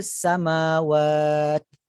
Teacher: Jadi tertahan aliran suara huruf ta, dan bila tertahan aliran suara tersebut akan terkeluar sedikit hamas. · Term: syiddah